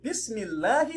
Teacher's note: So we apply tarqeeq, but not tafkheeem, by reading the lamun lightly.